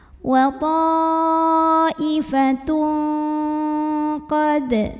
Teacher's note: Karena ada tanwin dhammah yang bertemu dengan huruf qaf. Maka tanwin dhammahnya ini dibunyikan samar-samar, siap-siap mau bilang qaf disertai dengungan. Dan dengungnya besar ya, bunyi ang banget karena mau bilang qaf. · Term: ikhfa hakiki